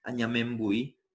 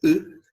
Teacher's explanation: es un sonido distinto totalmente a la I, más similar casi a la U, pero más raspado y desde la garganta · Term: letra gutural